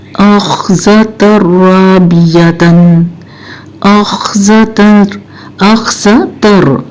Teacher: अब आपने देखा तन नहीं, मैंने कहा तर, क्योंकि ज़बर तनवीन के बाद रा आ गया जो कि इदगाम के हरूफ में से है।